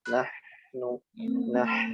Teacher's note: Nun yang bertasydid ditekan dan ditahan yang lama